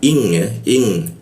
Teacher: bacaannya didenggungkan dan di tahan dua harakat